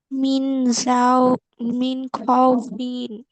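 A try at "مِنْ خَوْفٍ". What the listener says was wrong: মিন খাউফিন। খাউফিন বলে টানা যাবে না, মিন খাউফিন।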